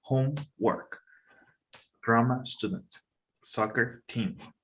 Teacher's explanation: and drama student the main stress is on the first word the first word is longer stronger and higher in Pitch than the second word · in noun compounds such as homework and drama student the main stress is on the first word the first word is longer stronger and higher in Pitch than